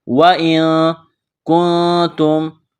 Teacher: نون ساکن کے بعد کاف ہے، حروف اخفا ہے، تو نون ساکن پر غنہ کریں گے، آواز ناک میں چھپائیں گے